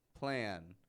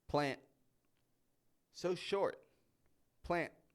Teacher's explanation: plant so short plant notice how my voice kind of Rises up a little too